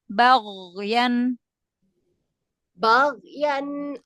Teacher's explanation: Ghoinnya nggak memantul ya, karena nggak ada qalqalah pada huruf ghoin ya.